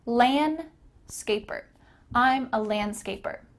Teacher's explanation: Notice that the D here is kind of cut out.